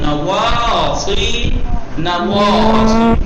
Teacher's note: نواسی میں سواد پرحجم اور پرحجم ہوتا ہے، اور واو ہونٹوں کے بیچ سے غنچے کی شکل میں